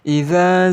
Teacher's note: ardhu zilzalaha di ayat pertama ini kita bertemu dengan idza yaitu ada huruf mad tabii sebelumnya berharakat fathah Maka dihukumi sebagai Mad thii panjangnya dua harakat